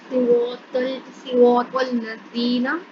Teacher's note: یہاں پر صاد کے نیچے زیر ہے، را کے اوپر زبر ہے اور اس کے آگے الف آ رہا ہے، تو یہاں پر الف مدہ ہو رہا ہے. را کو لمبا کریں گے، صاد کو لمبا نہیں کریں گے. اسی طرح طا کو لمبا نہیں کریں گے بلکہ طا کو اگلے لام کے ساتھ ملائیں گے